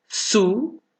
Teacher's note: Porque la E suena más que la I. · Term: diptongo creciente